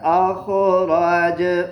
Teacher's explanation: اخراج پر قلقلہ کریں گے جب آپ نے وقف کرنا ہے، کیونکہ جیم حروف قلقلہ میں سے ہے